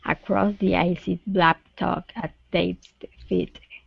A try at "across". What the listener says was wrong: Okay, so two things here. So instead of a crow, give me an a craw, and then blacktop.